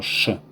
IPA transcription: ʃ